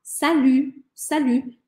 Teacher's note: Salut, e sem falar o T, tá? Salut, salut, em situações informais, em que eu já conheço bem a pessoa com quem eu estou falando.